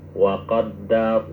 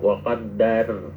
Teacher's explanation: Ketika ro mati setelah fathah maka itu tafkhimur ro. Jadi lari lidahnya itu ke atas bukan ke bawah.